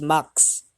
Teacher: for example the word mask mask may be realized as max the sound segment of the cluster sk at the end of the syllable are reversed